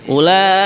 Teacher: kalimat ulaika dibaca 4 harokat panjangnya ya.